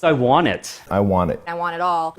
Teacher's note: it's not just 2-year-olds who say want without a T in this phrase.